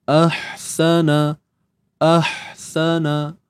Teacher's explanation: Matikan ha ni. Jadi makhraj hamzah di pangkal kerongkong, dan untuk huruf ha ni di tengah kerongkong. Okey, PK ni pangkal kerongkong, ha ni tengah kerongkong.